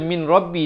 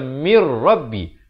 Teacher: Dia kena baca mir rabbi. Masuk terus ke dalam ra itu tanpa didengungkan. Mir rabbi 2 harakat. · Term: Idgham bila gunnah